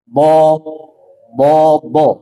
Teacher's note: huruf bo keluar dari sisi lidah bertemu dengan gigi geraham atas.